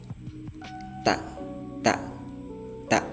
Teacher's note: itu dari dua gigi sama gusi